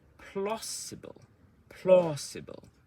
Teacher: So plau is loud and long, and you can hear the rhythm now.